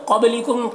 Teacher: क़ाफ को पुर पढ़ना है, हुरूफ मुस्तालिया में से है, बा में कलकला होगा